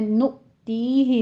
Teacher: नु ती ही में हमज़ा पर झटका देंगे और ती में या मद्दा 2 काउंट करना है